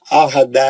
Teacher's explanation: دال موٹا کیوں پڑ رہا ہے، آرام سے پتلا پڑیے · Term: پتلا دال